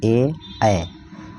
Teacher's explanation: जिन वर्णों का उच्चारण कंठ और तालु में जीभ के स्पर्श से होता है वो कंठ तालव्य होता है। जैसे ए, इसमें जो कंठ और तालु दोनों प्रयुक्त होते हैं।